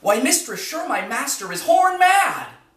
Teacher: in that example the last foot is a spondee and the one right before it is a Pyrrhic